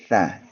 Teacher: kalau huruf sa yang titik tiga itu pengucapannya adalah menggigit lidah itu atau menyentuhkan lidah di ujung gigi seri atas ya.